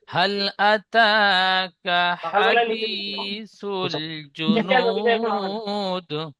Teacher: হাল আতা কা বলে টান দিচ্ছেন, কাফের উপর যাবার আছে, টান হবে না। · হাদি, ইয়া মাদ্দা একালিফ টান দেবেন, একালিফের বেশি হোক, কম যাতে না হয়